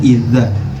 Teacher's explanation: Lidahnya dihimpit oleh gigi kita